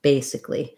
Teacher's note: Basically, what's happening there is that if I did basically, it would just be more syllables. So it gets reduced down, and we just go right from the C of sick into the L of the ly ending · has first syllable stress, and this letter I says a relaxed I sound